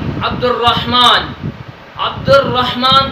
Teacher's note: عبد الرحمن کے اندر جو الف اور لام ہے اس کو نہیں پڑھا، ڈائریکٹ دال کو را کے ساتھ ملایا۔ اصل میں یہ لفظ لکھنے میں عبد الرحمن ہے، عبد الرحمن، ادھر جو ہم پڑھ رہے ہیں عبد الرحمن، کیونکہ را پر تشدید ہے، را پر شد ہے، اس وجہ سے الف اور لام کو نہیں پڑھ رہے ہیں۔ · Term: حروف شمسی